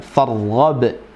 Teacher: Wa ila rabbika far, ra-nya tafkhim, tebal, farghab ya.